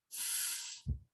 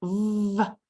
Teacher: like the sound F our vocal cords are not vibrating when we say the sound but when we say the sound V our vocal cords are vibrating and that's what distinguishes those two sounds because the mouth placement